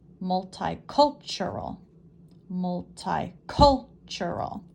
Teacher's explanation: cul sure all where's the emphasis multicultural multi cultural five syllables the stress or the emphasis is on the third syllable